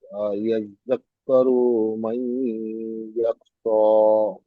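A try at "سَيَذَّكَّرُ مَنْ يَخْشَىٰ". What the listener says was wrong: আপনার এই রুটা টান হয়ে যাচ্ছে, সায়াযাক্কারু মান ইয়াখশা। জি, এই জায়গায় গুণনা কেন হবে বলুন তো ভাই? নুন সাকিনের পরে ইয়া এসছে, কি কায়দা?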